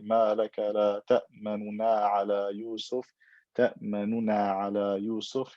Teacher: You don't pronounce the dhamma clearly, you read it quickly with ikhtilas